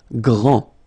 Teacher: Grand, final D, not pronounced, okay, G-R, gr, gr, gr, and then the nasal, en, grand, okay, and it means big or tall.